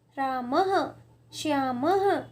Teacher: स्वरों के आगे जो दो बिंदियाँ लगती हैं उनको हम विसर्ग कहते हैं। और इसका उच्चारण हम ह के रूप में करते हैं